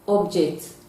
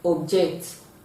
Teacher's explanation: you are going to stress the first syllable but when it is functioning as a verb it is going to have the stress from the second syllable